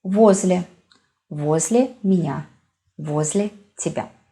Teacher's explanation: O is stressed here. And we pronounce O.